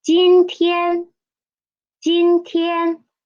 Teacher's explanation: it is a third tone we need to read it as a half third tone